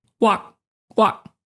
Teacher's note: We do this thing where we cut off the air in an abrupt way. So, it's not w that just kind of fades out. · And that's how you know that even though we didn't say the K, you know the word is walk because of the way we abruptly cut off the air